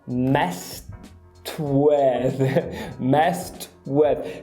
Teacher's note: o with começa com a semi-W, que é arredondado aqui nos lábios